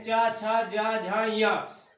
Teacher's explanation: जब हम बोलते हैं जो हमारी जिह्वा होती है ऊपर तालु में टच होती है, तब ये वर्ग के चा वर्ग के सारे वर्ण निकलते हैं, चा छा जा झा या।